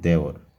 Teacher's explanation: খাঁটি বাংলা শব্দে এ ধ্বনির উচ্চারণ বিবৃত হয় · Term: বিবৃত উচ্চারণ